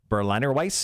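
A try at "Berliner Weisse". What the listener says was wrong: The W usually comes out as a V when you say it. Weiss.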